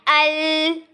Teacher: दाएं जानिब से जो है आवाज वो निकल आएगी। दाएं या बाएं जानिब से आवाज जो है वो बाहर आएगी। · जब हम अल पढ़ते हैं तो जो हमारी जुबान है वो इन दांतों के साथ अटैच हो जाती है